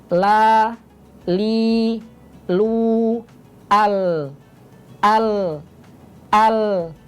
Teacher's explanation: Ini ujung lidah, tapi di bagian sisinya, yaitu huruf lam